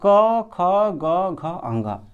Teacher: क वर्ग में जितना भी अक्षर आता है सब आ जाएगा, और जिसका उच्चारण स्थान क्या हो जाएगा, कंठ हो जाएगा